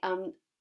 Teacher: there's an automatic vibration happening in the nose which isn't happening for the office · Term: automatically nasalizes